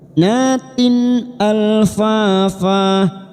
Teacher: kasrah tanwin bertemu hamzah idhar halki kita baca jelas tanpa mendengung